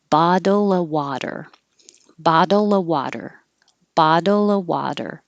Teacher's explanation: and if it's bottle of water those t's change to d's the of changes to uh